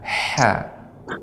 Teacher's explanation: huruf ha ini juga adalah huruf yang huruf hamas, banyak suara, banyaknya aliran udara. Ya, ha. Ya, ini juga sifatnya syiddah, banyak hamas ya.